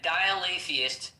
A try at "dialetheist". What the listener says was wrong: It's not dial-a.